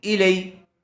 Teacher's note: یا ساکن سے پہلے زبر آیا ہوا ہے اس لیے لین کا قاعدہ ہوگا، اس کو جلدی اور نرم آواز سے ادا کریں گے۔ ای لئی، کاف زبر کا، کاف کے اوپر زبر ہے جلدی پڑھیں گے، اس کو چھوٹا کاف کہتے ہیں۔